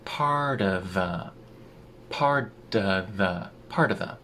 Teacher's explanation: the T in part turns into a tap